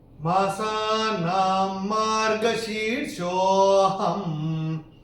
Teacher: तीसरे चरण में ना के ऊपर अनुस्वार के बाद का अक्षर है म, और अनुस्वार के बाद जब म आएगा तो अनुस्वार का उच्चारण होगा म।